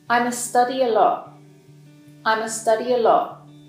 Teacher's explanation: The verb study and the adverb a lot are stressed here. I must and the article a is reduced to a schwa sound, I must study a lot.